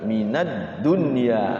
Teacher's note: Alsamsiah itu kayak al-idgham. Jadi setelah al itu langsung masuk huruf depannya masuk ke huruf dal. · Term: Alsamsiyah